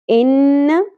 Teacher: نون مشدد غنہ ہوگا، زبر کو زیادہ نہیں کھینچنا